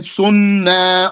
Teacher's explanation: Because the verb ends with a noon, and then the pronoun we are attaching is na, starting with the noon. So the noons merge.